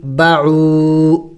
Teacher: واو مدہ ہے، اس کو بھی 1 الف کے مقدار لمبا کریں گے